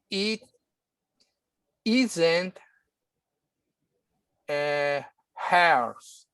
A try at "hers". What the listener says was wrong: Hers. So again, make sure to put the S, because if you leave the S, then I think you're going to say her violin.